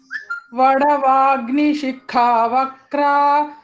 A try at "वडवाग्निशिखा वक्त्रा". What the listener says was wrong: It's not vakra, vaktra, tra, KTRA, tra, tra.